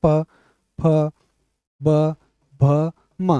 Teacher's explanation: ठीक है, ओष्ठ्य होता है क्योंकि ये होठ, देखो इनको प को बोलने में होठ दोनों चिपकते हैं। बिना होठ को मिले हुए प नहीं बोल सकते।